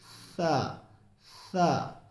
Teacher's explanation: سامنے اوپر والے جو دانت ہیں ان کو ثنایا علیہ کہتے ہیں، اور اس پر ہماری زبان کی نوک لگے گی